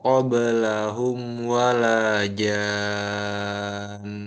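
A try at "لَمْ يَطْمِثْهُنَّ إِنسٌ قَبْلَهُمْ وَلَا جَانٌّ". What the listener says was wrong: kurang nunnya. Ee jadi bedakan nun sukun dan nun tasdid.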